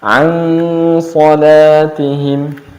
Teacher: shad adalah termasuk huruf isti'la yang dibaca tebal, maka cara bacanya pun ikhfa'nya dibaca tebal